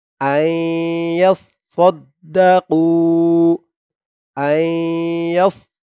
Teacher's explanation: নুনকে না ধরে তাসদিদ ওলা ইয়াকে ধরবে ঈদগামে বাগুন্না গুন্না হবে